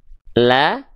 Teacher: a ya maka huruf lamnya kita baca dengan vokal a la kalau vokal a yang keluar berarti lamnya dibaca dengan keadaan tipis Kenapa karena kalau huruf tipis ketika berharakat fathah keluarnya vokal a